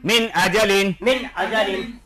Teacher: হরফ হামজা আসিয়াছে সাকিনের পরে ইজহারে সহরফের এক হরফ হামজা আসিয়াছে অতএব নুন সাকিনকে গুন্না ব্যতীত পরিষ্কার করিয়া পড়িতে হয়